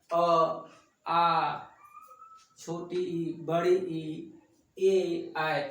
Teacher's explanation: जिन स्वरों के उच्चारण में होठ की वृत्तमुखी या गोलाकार नहीं होते हैं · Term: अवृतमुखी